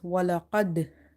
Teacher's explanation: Okay, but if our word is ending like this, walaqad, and qalqala letter is at the end and it's sakin, then it will be a strong qalqala